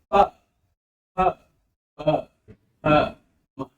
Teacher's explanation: ओष्ठ ध्वनियों में दोनों ओर सटेंगे, प फ फ फ म। दोनों ओठों के सटने से ओष्ठ ध्वनियां निकलती हैं।